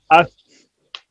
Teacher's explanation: सा को देखें तो उसमें आवाज रुकी नहीं है